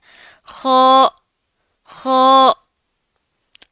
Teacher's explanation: خو، اس کا اخراج حلق کے اس حصے سے ہوتا ہے جو منہ کے قریب ہوتا ہے۔ یہ موٹا پڑھا جاتا ہے، اور جب ہم موٹے حروف کی ادائیگی کرتے ہیں نا، موٹے حروف کی، تو ہمارا منہ جو ہے وہ بھرا ہوا ہوتا ہے۔